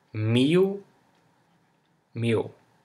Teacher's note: if it comes at the end of a word, this L sounds like U